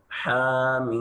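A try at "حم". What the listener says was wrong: ये हा से अदा नहीं करता है,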